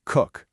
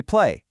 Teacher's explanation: Do you feel the difference at the very end of the word? When you finish that K sound in cook, your throat is still. That's what we call a voiceless sound. But when you hold the A sound in play, your fingers should be vibrating. That's a voiced sound.